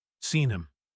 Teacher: The H in him disappears. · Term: disappearing h